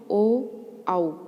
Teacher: कंठोष्ठ मतलब कंठ और होठ दोनों का प्रयोग हुआ ओ, आओ। जब हम बोल रहे हैं तो कंठ से भी आवाज़ आ रही है और होठ का भी इसमें प्रयोग हो रहा है।